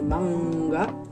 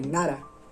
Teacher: Podemos encontrar una N velar, como es en el caso de manga, o una N más alveolar, como en el caso de nara.